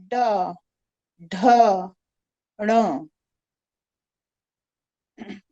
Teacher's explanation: All are spoken with the tongue tip touching the palate of the mouth.